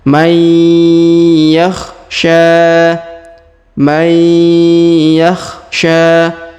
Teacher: Huruf nun sukun bertemu ya, maka nun sukunnya menghilang melebur ke huruf ya. Kita tahan dan tekan, kita dengungkan 2 harokat. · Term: idgham bi gunnah